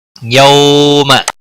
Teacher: واو ساکن سے پہلے زبر ہے اس لیے واولین کہلاتا ہے. نرمی کے ساتھ تھوڑا کھینچ کر ادا کریں گے. یہاں پر ملانے کی صورت میں ادغام باگنا ہوگا.